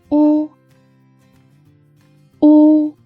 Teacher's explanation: When we pronounce u, our lips are rounded, protruding into small holes. The back of the tongue was raised and the vocal cords trembled.